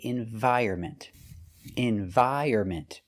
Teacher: The N is silent.